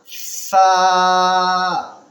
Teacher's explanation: زبان کی نوک کا کنارہ دانت کے اگلے حصے سے تھوڑا سا نکالیں گے